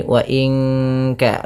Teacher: nun mati bertemu kaf suaranya disamarkan ke kaf ya terdengar bunyi wa inka langsung kepada makhraj huruf ka yang di mana kaf makhrajnya pangkal lidah kita di pangkal lidah.